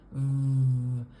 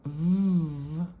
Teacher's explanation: lower lip to make the V sound but instead of f we're turning on the muscles in our throat and making vibration at our throat so V we call voiced voiced because we don't change the